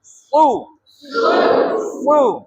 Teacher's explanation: ওই জিহ্বার আগাটা নিচের দাঁতের গোড়ায়, নিচের দাঁতের এভাবে লাগানোর পরে আপনাকে সু উচ্চারণ করতে হবে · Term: সদ পেশ